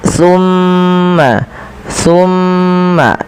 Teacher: Kemudian pada lafal tumma yaquuluna hadza pada lafal tumma tahan suara mimnya sepanjang dua harakat. Tumma jangan langsung dilepaskan karena ia ada bacaan gunah pada lafal bacaan ini.